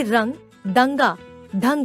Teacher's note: अनुस्वार के उच्चारण में नाक से सांस अधिक निकलती है तथा मुख से सांस कम निकलती है।